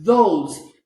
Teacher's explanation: you can see that it vibrates okay so this is a voice sound of th